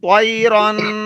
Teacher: تو یا زبر طی، را دو زبر رن، طیرن، رن کو کرنا ہے کیونکہ وہاں غنہ ہے. طی کو لمبا نہیں کرنا.